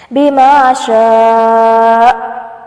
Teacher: وقف کی صورت میں حمزہ ساکن ہوگا تو جھٹکا محسوس ہوگا اور آواز کو بند کر لیں